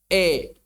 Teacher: mumalah wa hakiha dan hakikatnya adalah “ayyunha bil fathatillati qoblal alif nahwal kasroti.” Jadi intinya adalah membuat fathah condong. untuk membuat fathah yang terletak sebelum alif condong atau miring ke arah kasrah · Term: imalah